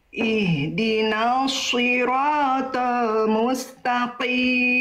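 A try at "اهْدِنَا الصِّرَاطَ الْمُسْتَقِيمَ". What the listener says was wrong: Di bagian ihdina dari na ke huruf sodnya langsung masuk. Jangan diseret, nanya jadi kepanjangan. Ihdinasi, enggak. Ihdinas, langsung masuk ke sodnya. Ihdinas siratal mustaqim. Oke, tapi nunnya jangan sampai ke bawah tebal. Nun itu huruf tipis, huruf tebal Bunda. Huruf nun itu huruf tebal, huruf tipis. Huruf tipis, jangan sampai ke bawah nos. ya, tipiskan naknya.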